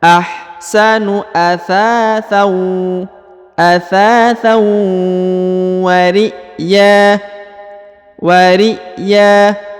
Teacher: harokat tanwin an bertemu dengan waw lagi, maka dibaca, ditahan, ditekan 2 harokat lalu didengungkan 2 harokat